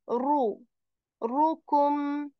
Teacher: Ra will be heavy as well because of dhamma on it. Ru. Rukum.